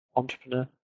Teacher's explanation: Words like entrepreneur, emphasis on the last syllable because it came from another language.